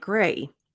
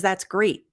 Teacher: If you take the T off completely, it's going to sound like gray.